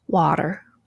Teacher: The T changes to an alveolar tap